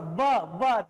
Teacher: दांत होठ से टकरा रहा है ना, अपर टीथ जो है लोअर लिप से टकरा रहा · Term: दंतोष्ठ